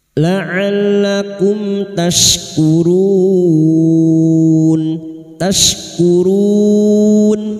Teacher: Huruf syin wastul lisan atau tengah lidah.